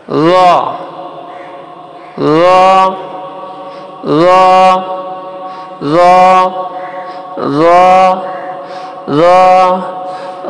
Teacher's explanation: র কিন্তু এই আপনার দালের সাথে সম্পর্ক, দাল আর র একই জায়গা থেকে কিন্তু উচ্চারণ হবে। র, র, উপরের দুই দাঁত, সানাইয়া উলিয়ার দুই দাঁত জিহ্বার আগা লাগাবো।